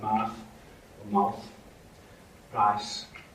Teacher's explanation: Not so much in the north, but it's in the south. And the mouth and price have what we call low central onset